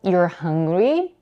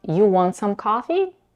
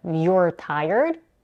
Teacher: The only thing that indicates they're asking a question is their rising intonation.